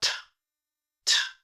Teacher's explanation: यह साउंड होता है एल्वियोलार प्लोसिव साउंड, यानी इसको बोलते समय हम अपने टंग के टिप को एल्वियोलार रिज पर टच करते हैं, और प्लोसिव का मतलब होता है थोड़ा सा हम एक्सप्लोज करते हैं, साउंड से ब्लास्ट करते हैं।